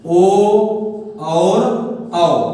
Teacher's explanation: अगर हम जब इनका उच्चारण करेंगे तो इनके उच्चारण में हमारे ओष्ठ गोल आकार के अर्थात वृत्त के आकार के हो जाते हैं, वही वृत्तमुखी होते हैं।